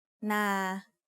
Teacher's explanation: So now that we know what a live sound is, we can learn our first tone rule, which is low class initial consonant plus live ending equals mid-tone. A mid-tone is pronounced at a flat pitch in the middle of your regular vocal range. Na is an example of a mid-tone syllable.